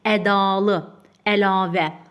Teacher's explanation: Bu sözlərin hər birində ikinci hecadakı sait uzanır. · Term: uzanan sait